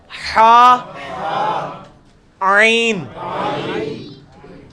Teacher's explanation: وسط حلق سے نکلے گا حا, عین